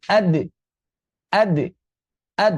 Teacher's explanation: ketika kita mengucapkan huruf-huruf yang sukun, seperti ada letupan, ya walaupun tidak keras